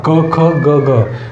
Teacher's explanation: क ख हे कंठामधून निघलं जाते